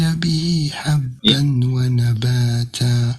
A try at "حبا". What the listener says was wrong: حبا يا أخي، حبا ما حبا، لأن الباء هنا التنوين. به حبا هذا يقول إدغام بغنة، يقول إدغام بغنة هذا. يا حبا ونباتا صحيح.